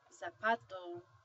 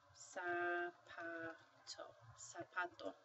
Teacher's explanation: the Z Sounds like an S so when you see this word you don't say zapato you say SA sapato